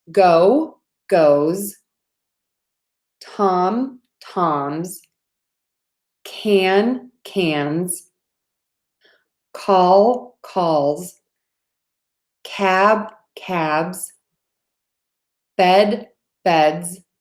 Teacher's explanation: when the word ends in a voiced sound we're going to add another voiced sound the Z